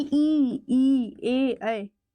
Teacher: प्रसरित हो गया। फैल गया है। इसमें वर्तुलाकार नहीं है।